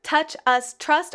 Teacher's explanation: the last word on each of these five lines has the same vowel sound of uh but there's variation on the consonant after it